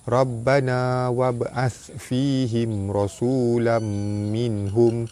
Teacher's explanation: Ba mati di tengah kalimah, hukum dia qalqalah sugra, lantunannya tidak kuat.